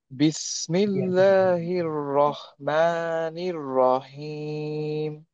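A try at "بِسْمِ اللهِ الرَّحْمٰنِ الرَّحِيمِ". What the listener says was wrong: Very good মাশাআল্লাহ।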